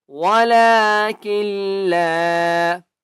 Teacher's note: کاف کو لام کے ساتھ ملائیں گے تشدید کے ساتھ ملائیں گے نون کو نہیں پڑھنا